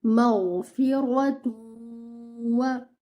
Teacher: you just have to stretch the gunna, protrude your lips for the dhamma, and then you have to do gunna, and then you have to read the waw